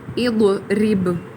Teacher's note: با قلقلہ ہوگا، را کو باریک پڑھا جائے · ضاد کو گول کر کے ادا کریں گے، دال کی آواز نہیں آنی چاہیے نہ ہی زا کی آواز آئے